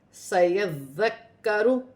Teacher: یہاں پر ذال بھی مشدد ہے اور کاف بھی مشدد ہے۔ سیذکر، ذال کو نرمی سے بھی ادا کیا جائے گا اور مشدد حرف کو ملا کر بھی پڑھا جائے گا